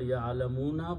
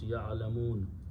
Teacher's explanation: Actually, it is the word ya'alamuna, but when you stop, you pronounce ya'alamun.